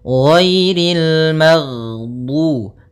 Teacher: Jahar yaitu tertahannya nafas kita. Jadi ketika melafalkan ghain, nafas kita tertahan, suara kita dialirkan